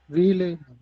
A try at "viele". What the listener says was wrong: ஃபீ F sound வரணும். ஆமா, வியோட pronunciation, வியோட புக் ஸ்டாபனோட என்ன சொல்லுவோம்? ஃபவ் தானே சொல்லுவோம். அப்போ எஃப் தான்.